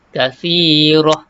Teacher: Bila kita wakaf pada ta bulat, kita akan wakaf dengan sebut huruf ha. Kasirah. Bukan kasiratan. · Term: ta marbutah